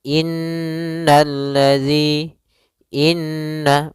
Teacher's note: Suara nun kita tahan dulu baru dibaca. Jangan langsung innalladzi, tapi tahan dulu 2 ketukan. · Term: gunnah